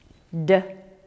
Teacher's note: Tongue tip and alveolar ridge. D is voiced.